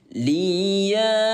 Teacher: Kode warna biru ada tanda alisnya maka dibaca panjang selama empat ketukan